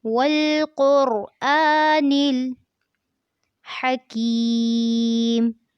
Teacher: جب آپ آ پڑھیں گے تو آپ نے اس بات کا دھیان رکھنا ہے کہ ناک میں آواز نہ جائے